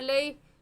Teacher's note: याए मद्दा होता तब खींचते, याए लीन है इस वजह से हम इसको नहीं खींचेंगे